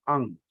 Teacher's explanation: अंग का उच्चार हम जब करते हैं, तो कंठ से और अपने नासिका से, दोनों का हम इस्तेमाल करते हैं अंग। लेकिन क वर्ग का जो निगहित है, तो वो अंग है, अंग।